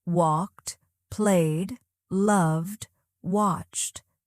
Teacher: Feel how your tongue touches lightly for D and your breath releases for T. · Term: ed endings